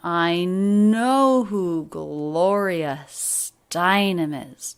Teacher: with three stressed syllables i know who gloria steinem is and all of those sounds linked together really smoothly there's no break between